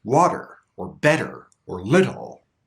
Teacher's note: the flap T has very light contact with the roof of the mouth it just lightly touches